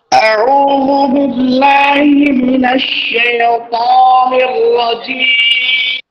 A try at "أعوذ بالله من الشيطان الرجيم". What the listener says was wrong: দেখেন আপনার শাইত একটু আয়না থাকলে বা ক্যামেরা দেখতেছেন তো নিজের ঠোঁটের দিকে খেয়াল করবেন। সেই ত মোটা করে, যত মোটা করবেন তাহলে আপনার আউযুবিল্লাহ মোটামুটি একটা লাইনে চলে আসবে। শুধু তটাকে আরো মোটা করে, ঠিক আছে? বাকি তটা খুব ভালো, মানে একেবারে ভুলের পর্যায়ে নিয়ে যাচ্ছে আপনাকে, মানে অসৌন্দর্যের পর্যায়ে নিয়ে যাচ্ছে।